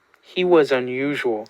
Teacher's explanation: you can definitely hear that sort of leaning into that second syllable of unusual as being stressed in some way